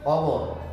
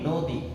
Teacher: এটা অ দিয়ে উচ্চারিত হয়, এই স্বাভাবিক বা বিবৃত, আর সংবৃতটা ও দিয়ে উচ্চারিত হয়